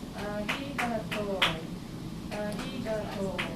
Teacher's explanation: To is twice as long.